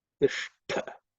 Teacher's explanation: This Ush is again cerebral Sha, tongue, tip of the tongue pointing up. Then the second letter is Tha, which is the second letter in the Ta Varga, so it has to be aspirated